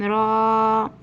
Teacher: را کو 2 حرکت کے برابر کھینچنا